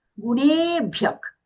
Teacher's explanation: Here the visarga is being pronounced as kha sound.